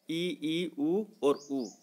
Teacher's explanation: मुख न के बराबर खुले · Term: संवृत स्वर